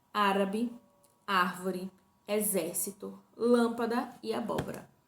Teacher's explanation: as palavras proparoxítonas, que são as que possuem a antepenúltima sílaba como tônica.